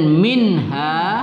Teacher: nun sukun bertemu ha, tidak kita dengungkan, izhar halqi